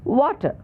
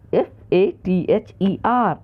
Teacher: जैसे अंग्रेजी का एक शब्द है वाटर, WATER, पर इसमें अंत में जो आर ध्वनि है उसका उच्चारण नहीं करते हैं। फादम, ऐसा ही है, FATHER, अंत में जो आर ध्वनि है, र ध्वनि, उसका उच्चारण नहीं होता। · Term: अंत व्यंजन लोप